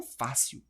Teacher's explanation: a força está aqui no A, é uma paroxítona e termina em L.